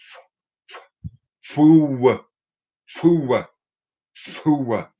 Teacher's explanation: it starts out with a voiceless w